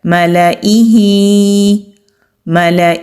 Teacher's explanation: لام کو ہم نے کھینچ کے ادا نہیں کرنا، لام کو جلدی سے ادا کر کے حمزہ پر چلے جانا ہے۔ ملئہ، ملئہ۔